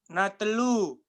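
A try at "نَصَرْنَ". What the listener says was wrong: Natenu, bukan lu. Natenu, N. Natenu.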